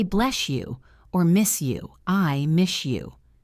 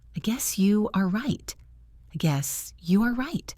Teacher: But did you know that S and Y often make a SH sound? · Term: assimilation